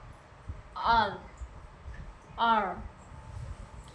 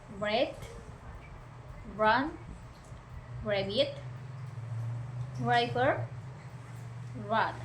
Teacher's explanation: Your tongue approaches the alveolar ridge but doesn't touch it, and air passes through while using your vocal cords.